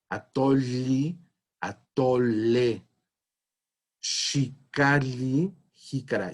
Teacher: noten cómo estoy pronunciando la doble L, no como Y, como estamos acostumbrados a transcribir el sonido de la Y en la lengua española, sino como L, como una lateral palatal